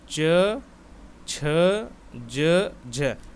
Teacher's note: हमारी जिह्वा दोस्तों तालु से टकरा रही है।